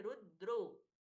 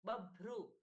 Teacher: रु के साथ में द जुड़ा है अल्प प्राण, ब के साथ में भ भगवान जी का भ महाप्राण